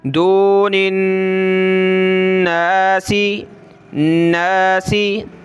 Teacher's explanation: یہاں نون پہ ہم غنہ کریں گے کیونکہ نون کے اوپر یہ تشدید ہے، اور واو کو ہم لام کے ساتھ ملائیں گے.